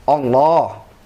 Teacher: Musyaddadah yang ditasydid. Mufakhamah yang ditafkhim, tebal.